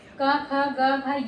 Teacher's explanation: ये कंठ होते हैं, यह कंठ से इसकी ध्वनि निकलती है